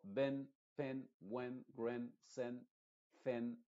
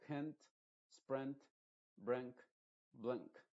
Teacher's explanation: No con una I muy clara. Es una I muy apagada que más se parece a una E en español. Entonces yo digo hint, sprint, brink, blink.